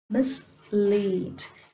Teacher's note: Here miss, it has a small vowel sound, but lead is a long vowel sound, so we stress lead.